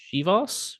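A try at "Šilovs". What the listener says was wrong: Yeah, it's like a sh sound in the beginning.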